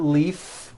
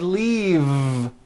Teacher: it's not leaf with an unvoiced F I should have said leave with a voiced V sound